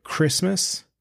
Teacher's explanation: when I say the word Christmas I hit the r sound harder than needed it gives the word a crisp sound elevating it above the standard noun I say it with reverence